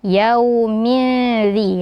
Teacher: Ada wau sukun sebelumnya huruf berharakat fathah maka dibaca Lin juga ya dibaca lembut